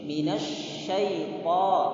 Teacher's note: Shin itu huruf tafasyi, berarti harus kita penuhkan mulut kita.